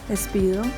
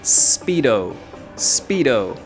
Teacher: En inglés, la S siempre empieza con el sonido S. En español, la S empieza con el sonido E, pero en inglés no. Entonces se dice Speedo.